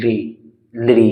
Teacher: और इसका जो उच्चारण होता है वो दंत्य से होता है, लिरी, लिरी, यानी कि हमारी जीभ जो है वो दांतों से टच करेगी तब इसका उच्चारण होता है, लिरी। तो इसको यहाँ पर इसका उच्चारण दंत्य से होता है, ये एक विलुप्त स्वर कहा जाता है, ठीक है।